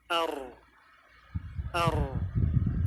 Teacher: bainiah ini sifat tengah-tengah antara mengalirnya suara dengan tertahannya suara jadi mengalir tapi sedikit ar ar tidak dibaca Ar tidak juga berhenti namun bainiah ada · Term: bainiyah